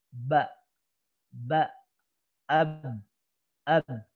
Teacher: saat huruf ba kita ucapkan, itu udaranya tertahan. Jadi tidak ada udara yang mengalir di sini. Nggak ada udara ngalir dari lewat bibir.